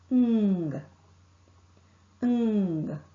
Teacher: Ng is articulated by pressing the back of the tongue against the soft palate. The soft palate is lowered and the air is not allowed to escape through the mouth. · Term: ng sound